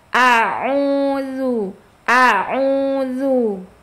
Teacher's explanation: Hamzah kan dia plong bacanya, tidak ada hambatan, keluar dari pita suara. Dia sifatnya juga jahar dan syiddah.